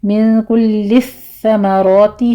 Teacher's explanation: मिन कुल्लिस समराती है, यहाँ पे नून साकिन का कायदा इख़्फ़ा की है, 2 काउंट करें। और आगे कुल्लिस समराती सा पर तशदीद है, यहाँ पर आपने बगैर सीटी की आवाज़ के इसको अदा करना है। रॉ मुफ़ख़म पढ़ते हुए 2 काउंट कीजिए।